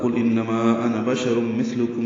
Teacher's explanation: قاف پر ہے، لام ساکن پہ اظہار ہے، انما میں نون مشدد پہ غنہ ہے